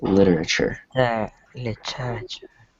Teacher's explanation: So the T, when it's between two vowels, it's soft. It's almost like a soft D or a weak D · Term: soft T